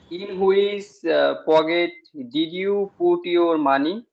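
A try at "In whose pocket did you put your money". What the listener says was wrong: stress হয় নাই বলেন, তোমার কোন পকেটে টাকা থাকে, তোমার কোন পকেটে টাকা থাকে,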